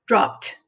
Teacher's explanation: remember the p is unvoiced it doesn't vibrate so it makes it sound so it's dropped cut one syllable